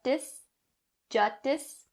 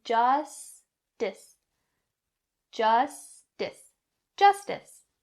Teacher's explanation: the s sounds in this word do not drop either s sound